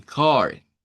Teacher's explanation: la A con la R suena con una A hacia atrás